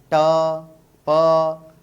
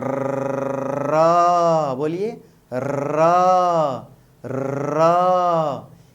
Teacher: लेकिन जरा बोलिए र, बोलिए र, र। इस र ध्वनि में जीभ इस कदर कांप रही है, हिल डोल रही है कि इसे लुंठित या प्रकंपित व्यंजन कहेंगे।